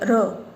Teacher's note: जब हम र को बोलते हैं तब जो हमारी जीभ है वो बेलन की तरह अंदर की तरफ मुड़ के फिर वापस सही होती है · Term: लुंठित